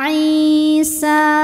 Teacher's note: adalah Mad thii ziri sebab ada Ya Sukun sebelumnya berharakat kasrah cara bacanya Ain dipanjangkan dua harakat